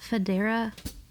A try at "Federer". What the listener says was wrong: You're putting the emphasis on the wrong thing, and then you're ending it with the wrong vowel.